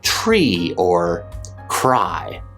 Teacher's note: You'll also still pronounce the R after a consonant in words like tree or cry.